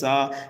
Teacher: سین حروف صفیریہ میں سے ہے، سیٹی کی آواز دے کر کے پڑھیں گے